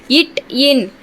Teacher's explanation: வல்லின எழுத்துகள் பிறக்கும் இடம் மார்பு. நாவின் நுனி அன்னத்தின் நுனியை பொருந்துவதால் பிறக்கும் எழுத்துகள்